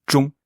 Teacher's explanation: En fait, pour moi, il appuie sur la nasalité du son plus que le son G. Vraiment, c'est zhong.